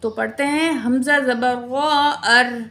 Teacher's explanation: اگر وہ زبر یا پیش ہو تو ہم را کو پر پڑھیں گے، اگر زیر ہوگی تو را کو باریک پڑھیں گے. تو یہاں دیکھیں را ساکن سے پچھلے الفاظ حمزہ ہے، اس کے اوپر زبر ہے، تو اس لیے ہم را کو پر پڑھیں گے